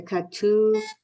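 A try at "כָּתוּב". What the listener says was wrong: It's a chaf. The cha.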